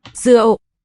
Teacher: I hear a glottal stop, and that's consistent with this subscript dot tone.